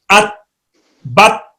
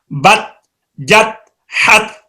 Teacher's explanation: زبان کی نوک جو ہے یہ ثناء علیہ کے ساتھ لگ رہی ہے